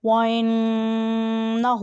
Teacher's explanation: وَإِنَّهُ، نون کے اوپر شد ہے، اور جہاں نون کے اوپر شد آ جائے وہ حرف غنہ، یعنی اس کی آواز کو ناک میں لے جا کر ادا کریں۔ ہاں کے اوپر الٹا پیش ہے، اس لیے اسے مد کریں۔